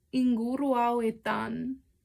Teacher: we have these 2 words that are just elided together